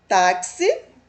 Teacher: a sílaba tônica aqui é o tá, é uma paroxítona